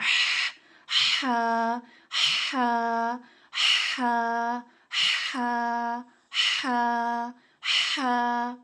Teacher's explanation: حلق کے درمیان سے نکلے گا